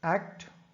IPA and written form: ækt (Act)